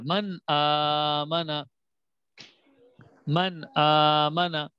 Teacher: جی یہ حمزہ ہے, بالکل جزاک اللہ, حمزہ ہے. تو نون ساکن کے بعد جب حمزہ آ جائے تو وہاں پر ہم نے غنہ نہیں کرنا ہوتا ہے, نون کو ظاہر کرنا ہوتا ہے. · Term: اظہار